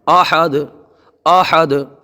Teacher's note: دیکھیے دال میں آپ کو بعد میں آواز آ رہی ہوگی، یہی قلقلہ ہے